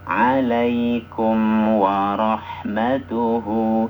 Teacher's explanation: huruf mim, karena dia huruf yang memang sifat aslinya dengung, maka kita dengungkan sedikit, asalkan jangan sampai berapa 2 harokat, karena nanti hukumnya berubah. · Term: izhar syafawi